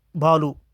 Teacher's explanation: भा महाप्राण घोष ओट स्पर्श